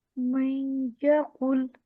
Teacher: time دینا ہے من غنہ کو، 1 الف کے برابر ٹائم دینا ہے